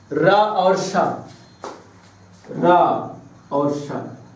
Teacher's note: इस सा को मूर्धन्य सा भी बोला जाता है क्योंकि मूर्धा से उच्चारण होता है